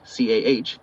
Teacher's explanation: dropping the R sound after vowels, making car sound like c ah